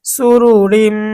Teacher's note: রিম এখানে তানভিন দুই জের আসছে, তানভিনের পরে মিম আসছে ঈদগামে বা গুন্নার হরফ, তা আমাদেরকে গুন্না সহ মিলিয়ে পড়তে হবে। সুরু রিম, মিম ওয়াও জবর মাও, মাও, জবরের বাম পাশে জজমুলা ওয়াও আসছে, এটা লিনের হরফ।